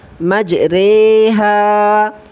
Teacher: ویسے ہم نے کھڑی زیر کو نیچے کی طرف کھینچنا پڑا تھا، اس کو بھی نیچے کی طرف کھینچیں گے، لیکن ری نہیں پڑھیں گے، رے پڑھیں گے کیونکہ یہاں ایمالا ہوتا ہے